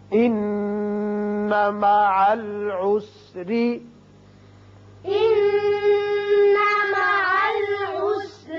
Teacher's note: نون مشدد ہے، غنہ کریں گے، یہاں را باریک ہوگا